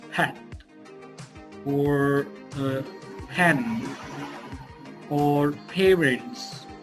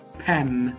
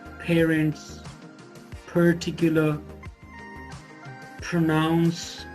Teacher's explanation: four of the sounds in the beginning aspirated